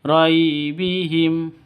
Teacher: roi sifat lin, lentur, lemes ya, tidak boleh disentak, tidak boleh dipanjangkan